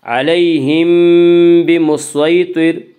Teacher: اس کا قاعدہ ہے کہ میم ساکن کے بعد اگر با آئے تو وہاں پہ اخفاء شفوی ہوگا۔ علیہم بمسیطر، صاد کو پر پڑھیں گے، صاد حروف مستعلیہ میں سے ہے۔